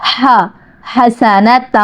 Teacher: فد دن یا، ہا، ہا، سانس لے کے بے شک پڑھیے گا، ہا، حسنۃ، ہا حلق سے نکالیے گا، وسط حلق سے ادا ہوتا ہے